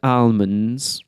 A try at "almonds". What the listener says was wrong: Oh, pronouncing every letter.